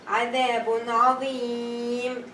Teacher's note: So we're gonna have mad due to voluntary stopping.